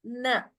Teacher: It is not Na, it is Na. Softer Na, where the tongue is touching the root of the teeth. So on the upper jaw.